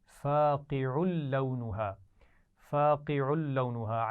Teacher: عین پر تنوین ہے اور بعد میں لام ہے، تو ملا کر تو پڑھیں گے لیکن غنہ نہیں کریں گے